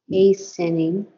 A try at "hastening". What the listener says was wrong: There's no sound of the T.